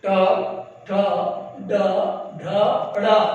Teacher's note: जीभ जब ऊपर उठती है और दांत के अगले जड़ की तरफ मुड़ जाती है, उसे हम मूर्धा कहते हैं। तो इनके स्थान उच्चारण इसी मूर्धा से होते हैं, इस नाते इन्हें मूर्धा उच्चारित वर्ण कहते हैं।